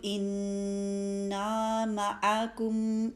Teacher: نون مشدد آیا ہے اس میں غنہ کو پہلے ٹائم پورا دینا ہے